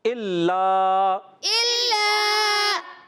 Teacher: لام مشدد ذرا رک کر ادا کریں گے. لام الف زبر لا، علی مدہ ہے، ایک الف کھینچنا ہے